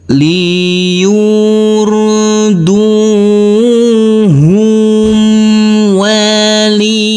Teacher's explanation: Huruf sin kita baca dengan panjang dua harakat.